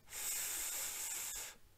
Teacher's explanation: den Frikativ [f] beispielsweise kann ich so lange halten, wie ich eben Luft habe